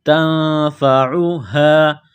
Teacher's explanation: نون کے ساتھ پلس کرنا ہے، تا کو باریک کرنا ہے، نون ساکن کے بعد فا ہے، حروف اخفا ہے تو نون ساکن پر غنہ کریں گے